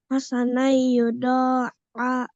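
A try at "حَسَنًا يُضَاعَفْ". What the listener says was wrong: Ingat dengungnya ya. Idgham bi gunnahnya gimana bacanya? Agak ditahan lebih lama ya.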